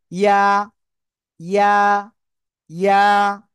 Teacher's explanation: তালুর সাথে লাগিয়ে এক আলিফ টেনে উচ্চারণ করতে হবে। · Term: ইয়া অক্ষরটা